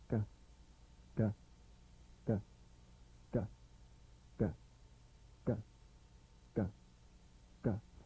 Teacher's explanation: a crisp tap and a voiced pulsation of the back of the tongue